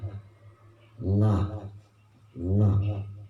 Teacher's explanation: Kemudian ada juga huruf lam. Lam itu berada pada di tepi lidah. La, la, tepi itu pinggir.